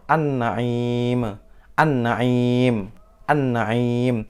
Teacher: Nah, itu langsung ke nunnya. Alnya tidak terbaca. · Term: idgham syamsiyah